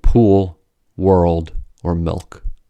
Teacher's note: the back of the tongue is raised toward the velum. That is, there is an additional arching of the tongue in the velar region. · the dark L has a vowel sound, schwa, embedded in it